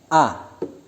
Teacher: Makharijul hurufnya bertempat pada pangkal tenggorokan.